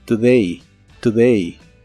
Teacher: la letra o de esta palabra se pronuncia como una u muy muy suave y corta